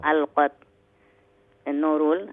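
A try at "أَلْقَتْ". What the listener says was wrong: No, alqat qaf full mouth.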